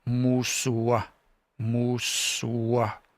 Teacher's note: So if you think of this as an O, but you pronounce it like an O, like oh, like shook or book, and you say moose, o, musua, musua. It's not really a W, but we write it that way because it's convenient, I guess. But it really is more like an O. It's like a rounding of the lips.